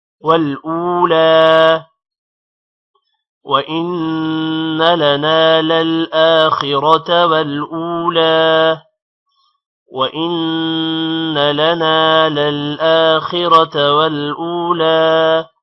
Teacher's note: والأولى واو کی وجہ سے او کو تھوڑا لمبا کریں گے اور لام پر کھڑی زبر ہے، لام بھی لمبا ہوگا · للآخرة حمزہ پر کھڑی زبر ہے، آ تھوڑا لمبا ہوگا